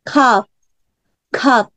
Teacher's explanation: P는 크 소리 하시면 안 돼요. 막아주셔야 돼요.